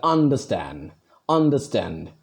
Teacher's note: So I give force on stand.